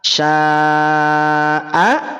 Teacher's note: Sya asalnya 2 harokat, tapi karena bertemu dengan hamzah maka dia jadi 6 harokat ketika waqaf.